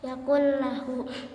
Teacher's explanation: apabila nun mati atau tanwin bertemu dengan huruf yang 2, yaitu lam ra, maka cara bacanya dimasukkan tanpa berdengung. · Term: Idgham bilagunah